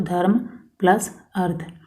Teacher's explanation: इसमें धर्म का अ और अर्थ का अ मिलकर आ, धर्मार्थ बन गए हैं। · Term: दीर्घ संधि